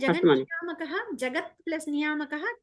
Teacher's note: తకారానికి నకారం అనే అనునాసక వచ్చింది సో త బదులు న అనేది ఆదేశం అయింది